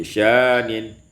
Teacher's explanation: Pada ayat yang ke-29, sya'nin, ibdalul hamzati alifan, ditukar hamzah dengan alif maka menjadi syanin.